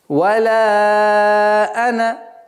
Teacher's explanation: При остановке алиф произносится, при слитном чтении она аннулируется. Итак, так как мы читаем слитно, мы не произносим алиф.